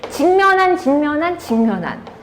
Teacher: 기역과 미음이 만났어요. 그런데 어떤 결과가 됐어요? 이응과 미음이 됐어요. 그럼 기역이 이응으로 바뀐 거죠? 이응은 어디 갔냐? 콧소리에 해당하죠. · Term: 비음